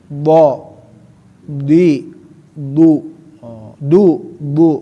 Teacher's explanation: si D itu enggak punya sifat hames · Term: sifat jahar